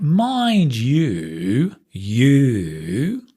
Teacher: Mind you, you, that's falling and rising